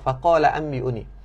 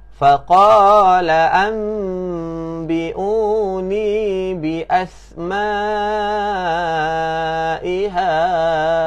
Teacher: we want to change the sound of the letter nun to letter mim.